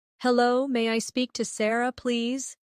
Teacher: Notice how may I sounds like may-a in fast speech.